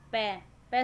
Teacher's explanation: पै शब्द बोलते वक्त दोनों होठ मिल रहे हैं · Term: ओष्ठ्य